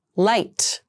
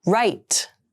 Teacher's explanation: the alvear sound L that's pronounced with the tip of the tongue touching the back of the upper teeth